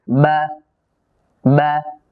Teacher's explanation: বা জবর উচ্চারণের সময়ও এক প্রকারের কলকলা হয়। এই কলকলাটার দিকে খুব বেশি খেয়াল রাখা জরুরি। · এমনিতেই বা হরফের মধ্যে আরেকটি সিফাত পাওয়া যায়, সিদ্দাত, যার কারণে আওয়াজ খুব শক্ত হবে।